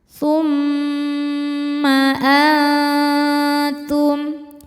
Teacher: Mimnya dihukumi gunnah musyaddadah karena mim bertasydid. Cara bacanya berdengung, tahan dengungannya kurang lebih 2 harokat. Jadi bunyi M tahan.